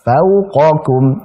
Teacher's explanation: Jadi qa huruf tebal, kum huruf tipis. Jadi qa ku, bukan qaku.